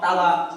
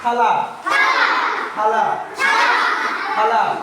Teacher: তা বলে বাতাস বের হয় না, কি বের হবে? থা, থা, বাতাস বের হবে।